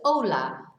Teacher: remember, we don't pronounce the H. So it's hola, but it's spelt with a H.